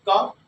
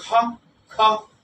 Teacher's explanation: यानी ख कहने पर ज्यादा वायु निकलती है। यानी इसमें हकार जैसी ध्वनि होती है। इसमें नहीं होती है। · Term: महाप्राण